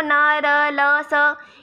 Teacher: ये न र ल स दांतों को टच नहीं कर रहे हैं इसलिए ये वत्सरीय हो गए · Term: वत्सरीय व्यंजन